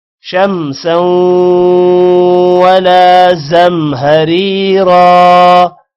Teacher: شمسا غنہ ہوگا سوں پر، ولا لام کے بعد الف ہے، لمبا کریں گے